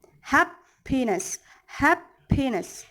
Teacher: one stressed syllable followed by two unstressed syllable